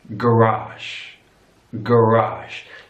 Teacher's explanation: so your stress is on the last syllable